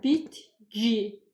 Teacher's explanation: Bitki sözündə isə k hərfi g səsinə keçir.